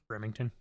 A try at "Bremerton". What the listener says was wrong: There's no G. Bremerton.